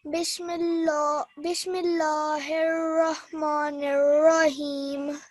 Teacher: not a thick lam, but a normal lam because of the kasra underneath the meme